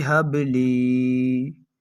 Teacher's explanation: تو اس جگہ پر حرف با موجود ہے جو کہ حروف قلقلہ میں سے ہے، اور یہ حرف با ساکن بھی ہے، تو اس وجہ سے ہم اس حرف با کے اندر خوب قلقلہ ظاہر کر کر پڑھیں گے